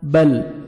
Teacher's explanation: زبر الف یا، دنیا، حیات الدنیا، بل تؤثرون الحیات الدنیا، بل، با کو لام کے ساتھ ملانا ہے اور لام کو آپ نے حرکت ہلانا نہیں ہے